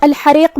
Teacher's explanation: کلمت الحریق میں یہاں ہم ہا کو حلق کے درمیان والے حصے سے ادا کریں گے